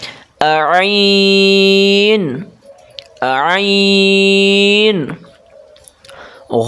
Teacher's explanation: اس کو موٹا کر کے پڑھنا ہے، حلق سے آواز نکالیں